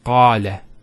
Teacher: Notice the elongation of the A sound. Qala. Not qala, qala. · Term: long vowels